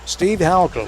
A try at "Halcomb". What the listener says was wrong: Halcomb, not Holcomb, but Halcomb.